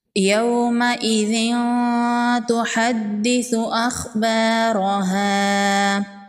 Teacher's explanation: یومئذ تحدث اخبارها، واو لین ہے، اس کو نرمی سے پڑھیں گے، ذال کو نرمی سے پڑھیں گے۔ دال پر تشدید ہے، دال کو سختی سے پڑھیں گے۔ ثا کو نرمی سے پڑھیں گے۔